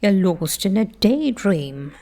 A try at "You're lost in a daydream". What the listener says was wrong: Okay, I love that, lost.